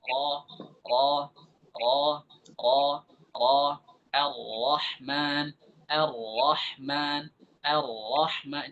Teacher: ra yang tebal itu ada terjadi lengkungan di lidah kemudian lengkungan bersamaan dengan penyempitan di tenggorokan